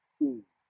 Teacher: what we have noticed is the lips come forward.